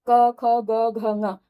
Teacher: पांचों ही वर्णों का उच्चारण स्थान भी कंठ ही होगा